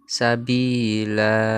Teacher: Hukum bacaannya mad iwad karena ada fathatain pada akhir kata. Jika waqaf atau berhenti dibaca mad sehingga harokat tanwin tidak lagi dibunyikan